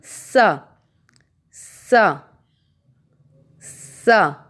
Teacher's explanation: زبان کی نوک سامنے والے نیچے کی دانتوں کے کناروں سے لگا کر سین ادا کیا جاتا ہے۔